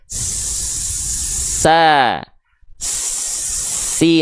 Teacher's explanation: Sin punya sifat namanya sofir. Sofir itu adalah berdesis atau ada yang bilang juga bersuit-suit.